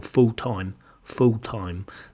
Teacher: this l in fulltime it's not always pronounced